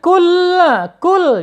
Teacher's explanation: penekanannya lebih kuat, ditekan ya, kemudian ditahan 2 harokat